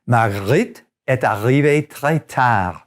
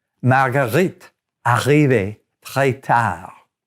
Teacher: The R sound in French comes from the back of your throat and is real easy to make.